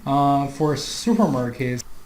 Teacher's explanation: notice the rise in intonation there